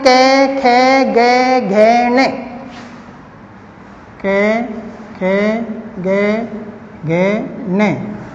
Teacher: अर्थात ये मुख के अंदर जब हम इन सब वर्णों को बोलते हैं तो जो हमारी जीभ जो होती है वो कंठ वाले हिस्से को या कंठ वाले स्थान को स्पर्श करती है